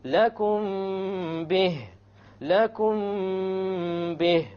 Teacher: We have a meme sakin followed by a ba. Once again, we're going to have an ikhfa, and there will be a ghunna.